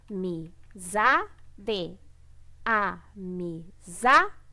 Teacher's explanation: A sílaba tônica é o za, tá? O za é a penúltima sílaba, então é uma paroxítona, tá? É a penúltima.